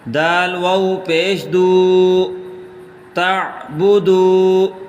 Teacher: تا عین زبر تا، با پیش بو، تا بو، دال واو پیش دو، دال کو تھوڑا سا کھینچ کے پڑھیں کیونکہ آگے واو مدہ ہے